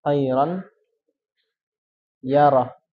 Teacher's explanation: Apabila ada nun sukun atau tanwin bertemu dengan salah satu dari 4 huruf, yanmu atau ya, nun, mim, dan waw, maka cara bacanya adalah melebur dengan gunnah, dengan disertai gunnah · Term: idgham bi gunnah